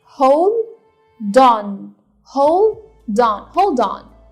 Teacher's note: هناخد الدي اللي هي في آخر hold ونحطها مع on